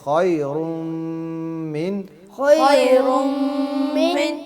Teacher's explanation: یہ جو من ہے یہاں پہ غنہ نہیں کریں گے، من نہیں کریں گے، یہاں پہ اخفا ہے، ٹھیک ہے؟ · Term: اظہار